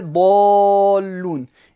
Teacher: Son singulier est dallun. Et là, il y a une shadda après une prolongation. C'est ce qui impose un med lazim, une prolongation obligatoire et impérative de 6 temps, 6 harakat dans le tajwid.